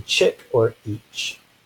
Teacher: So we have the t or the t followed by the sh. This is the voiceless postalveolar affricate. We have the voiceless t and the voiceless sh, so really two different sounds, but they occur really close together, so sometimes people consider them to be one sound.